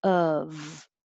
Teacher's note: The first part is the schwa. The tongue is very low, pulled back.